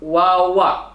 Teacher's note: Di mana wawu, ba dan mim di sini keluar di antara dua bibir, antara bibir atas dan bibir bawah. Hanya saja untuk wawu bibir membuka, sedangkan untuk ba dan mim bibir membungkam. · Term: as-safatain